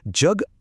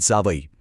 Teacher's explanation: जगमधल्या जचा उच्चार य युक्त आहे, तो झाला तालव्य. पण जावईमधल्या जचा उच्चार अयुक्त आहे, तो झाला दंत तालव्य.